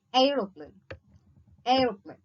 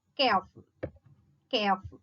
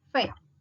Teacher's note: a glide from a front half open unrounded vowel to a central unrounded vowel between half close and half open